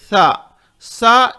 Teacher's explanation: تا تا اس طرح نہیں کہیں گے، تا اس طرح نہیں کہیں گے، تا بغیر جھٹکے کے. سا اس کے لیے زبان باریک باہر نکالیں گے دو دانتوں سے، دانتوں کے باہر زبان نکالیں گے. سا سا اس طریقے سے سین کی آواز اس میں نہیں آئے گی